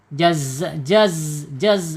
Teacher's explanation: kalau zai ada di alisan yaitu ujung lidahnya menyentuh gigi seri bawah. Zai sifatnya dia ee mempunyai sifat ee saofir ya.